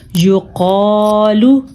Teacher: یا پیش یو قاذب الف قا یو قا، لام پیشلو یو قالو۔ الف کو ہم نے تب کھینچا کیونکہ یہ الف مدہ ہے، الف سے پہلے زبر ہو تو پھر وہ الف مدہ ہوتا ہے۔